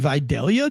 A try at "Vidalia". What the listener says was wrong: You don't pronounce the L. It's just Vidalia.